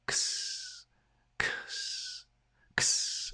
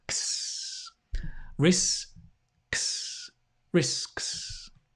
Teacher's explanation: The k and the s almost come together.